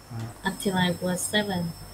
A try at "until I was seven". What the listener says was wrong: Ok.